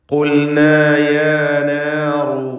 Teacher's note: റായിന് തഫ്ഖീം കൊടുക്കുക, തടിപ്പിച്ച് റായിന് ഉച്ചരിക്കുക. ഖുൽന എന്ന് പറയുമ്പോൾ ഖാഫിനും തഫ്ഖീമാണ്.